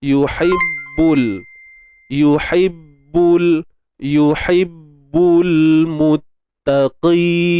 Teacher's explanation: ha pedas jangan lupa ha ni kita sempitkan tengah lidah.